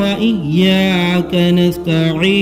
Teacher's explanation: نون پیش ہے، ضمہ ہے مگر آیت ہونے کی بنیاد پر یہاں بھی نون کو ساکن کر دے رہے ہیں